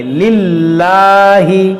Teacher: اب یہاں پر غور کیجئے اس میں جلالت سے پہلے اس میں جلالت کے لام کے نیچے زیر ہے تو اس لام کو باریک پڑھیں گے، اس کو موٹا نہیں کریں گے